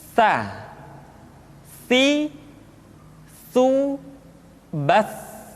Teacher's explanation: Tha dikeluarkan dengan menyentuhkan ujung lidah kita dengan dinding dua gigi seri bagian atas. Diucapkan dengan suara dan nafas yang terdengar mengalir. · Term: huruf Tha